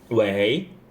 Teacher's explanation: when we are calling and answering someone, we will use 喂, the second tone more than the fourth tone. Okay, more than the first tone, but it doesn't mean when you say 喂, the fourth tone is wrong.